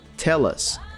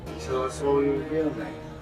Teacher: Basically, the L sound from tell links to the following vowel sound in us, tell us. And then the S from us also links to the following vowel sound in all, tell us all. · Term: connected speech